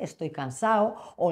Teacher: Hemos visto como el andaluz eh a veces omite la D